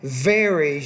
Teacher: The V, as in varies, you need to pronounce that V with a little bit more vibration.